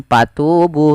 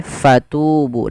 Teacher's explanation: fa alirkan nafas, karena fa punya sifat huruf hamas, yaitu harus mengalirnya nafas. Jangan dibaca dengan patubu, tapi fatubu dengan f.